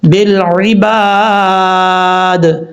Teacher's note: با لام زیر بل، عین زیر عی، با الف زبر با، دال زیر دی، بالعبادی، جب یہاں پہ سٹاپ کریں گے تو دال ساکن ہو جائے گا